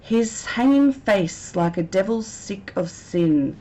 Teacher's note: we've got the constant s or the repetition of the S sound which we call sibilants